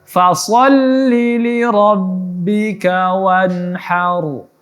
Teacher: huruf ro yang sukun sebelumnya ada huruf berbaris fathah maka ditebalkan